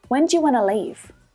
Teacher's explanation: stress patterns can highlight the really important parts of our sentence. When and leave.